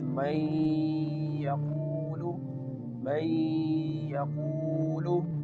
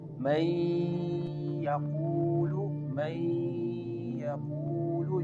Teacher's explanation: Here in this word, the Noon merge with Ya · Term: Idghaam